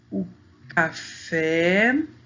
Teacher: No café, a sílaba mais forte, que a gente fala com mais aberto, é a última sílaba.